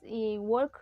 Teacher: recuerden que no se pronuncia la l